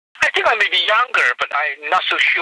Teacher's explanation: the timbre has changed, become richer and more confident, less tremulous